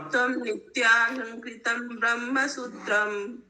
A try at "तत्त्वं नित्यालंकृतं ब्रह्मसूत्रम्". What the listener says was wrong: नहीं, इसका ट्यून अलग होगा। नित्यालंकृत ब्रह्मसूत्रम।